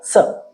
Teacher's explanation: ಸ ನಾಲಿಗೆಯನ್ನು ಮಡಿಸದೆ ನೇರವಾಗಿ ಇಟ್ಟು ಹೇಳುವಂತಹ ಅಕ್ಷರ ಸ.